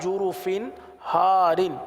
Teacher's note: دیکھیں جرف ہار، فا کے نیچے دو زیر کی تنوین ہے، تنوین کے بعد ہا ہے، ہا حروف حلقی میں سے آ رہا ہے، لہٰذا یہاں پر اظہار کا قاعدہ ہوگا، گنہ نہیں کریں گے، اور ہم نے گنہ نہیں کیا، ہم نے پڑھا جرف ہار.